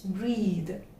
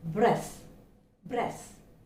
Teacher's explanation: The z sound is heard. Okay, it's a buzzing sound.